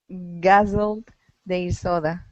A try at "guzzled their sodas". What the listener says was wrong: oh get that s there